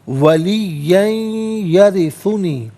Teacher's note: तो मिलाकर पढ़ेंगे तो इस तरीके से पढ़ेंगे कि वलीयन में या पर दो ज़बर की तनवीन, तो इससे यरिसु की या के साथ मिलाएंगे, या की आवाज़ को गुन्ने के साथ अदा किया जाएगा